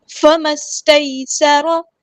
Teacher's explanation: سین کی سیٹی واضح کرنی ہے، سین باریک لائٹ لیٹر ہے ، را یہاں پہ ہیوی لیٹر ہے پورا ادا کریں گے،